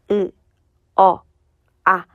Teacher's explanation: 으 어 아 점점 입을 벌리는 정도가 커지지.